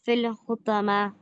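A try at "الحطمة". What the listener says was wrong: पॉ should be heavy. अल हुतामा।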